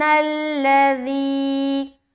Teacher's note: ذی کو باریکی سے نکالیں گے اور مد بھی کریں گے